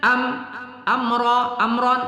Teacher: itu mim sukun bertemu ra izhar syafawi tidak kita dengungkan